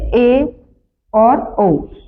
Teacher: वे स्वर जिनके उच्चारण में मुख संवृत स्वरों की तुलना में आधा बंद सा रहता है।